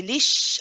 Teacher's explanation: your lips are not protruding out that they are flat because the sheen is produced from the inside from the middle of the tongue not using the lips